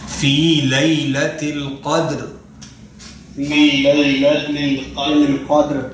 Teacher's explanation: دال پہ کلکلا ہوگا, تھوڑی سی آواز ٹکرائے گی. را پہ نہیں ہوگا, را حروف کلکلا میں سے نہیں ہے.